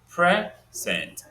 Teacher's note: these are two syllables. The first syllable is stressed.